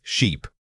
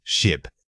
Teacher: The physical difference is simply that the sound in sheep's requires more sustained vocal energy than the quick snap of ship. Try stretching the word out slightly while keeping your tongue steady. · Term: Short versus long vowel